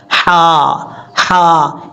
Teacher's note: جو آپ کو میں نے حلق کے 3 حصے بتائے تھے ان میں سے ایک حصہ جو درمیان یعنی گلے کے درمیان سے ادا ہوتا ہے، وہاں سے یہ ہا پڑھا جاتا ہے